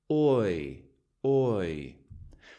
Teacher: Your tongue starts really low and moves upward, and your lips start almost completely closed to become relaxed. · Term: diphthong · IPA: /ɔɪ/